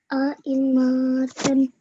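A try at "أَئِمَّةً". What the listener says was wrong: Okay, you're still making, when you join the ta, you're making the meme a little long, but that's okay. It's probably because there's another letter and you accidentally make it a bit longer.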